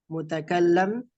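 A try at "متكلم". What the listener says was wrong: mutakallim, mutakallim. Lah, mutakallim, laisa mutakallam. Bukan mutakallam tapi mutakallim. Bukan, ini kalau dia cetak, kalau seandainya harokat di bawah tasdid berarti dia kasroh. Kalau di atas tasdid baru dia fathah gitu.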